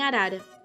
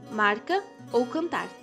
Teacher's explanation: TEP é uma consoante oclusiva alveolar sonora e é, assim como a vibrante, produzido com a ponta da língua nos dentes ou nos alvéolos. O som resultante é uma explosão sonora e é percebido como uma parada na fala.